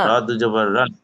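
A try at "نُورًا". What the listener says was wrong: র দুজবর কেন ধরবেন? রয়ের সাথে নুনকে ধরতে হবে, তানজিল আছে তো।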